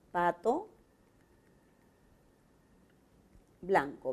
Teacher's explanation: La P es un oclusivo. La T también es oclusivo. La B, oclusivo. La L es un lateral. La N es una nasal. Y la K es un oclusivo. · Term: modo de articulación